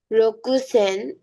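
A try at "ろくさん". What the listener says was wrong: রোকসান, রকুসান না রোকসান।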